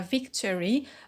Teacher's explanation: in victory we have a dropped schwa in victory